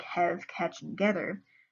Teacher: One of the most striking features of the Ozark pronunciation is the disconcerting fashion in which the vowels are shifted about. He describes the A sound in the words have, catch, and gather and how they are pronounced with a short E. They sound more like have, catch, and gather.